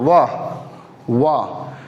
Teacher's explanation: ये नीचे का ओंठ है ना, ऊपर के दांत पे चिपकता है, सटाते हैं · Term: दंतोष्ठ